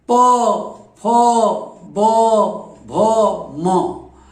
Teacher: इन अक्षरों को बोलने के लिए दोनों ओठ आपस में चिपकते, बिना ओठ चिपके ये अक्षर नहीं निकलेंगे।